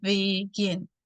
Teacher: No digo begin, sino begin. Entonces, mi acento, mi stress está en la última sílaba